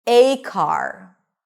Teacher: you're not going to use the schwa, you're going to use the 'ei' diphthong.